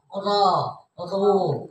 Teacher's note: kalau di fathah atau di domah itu tafhim tebal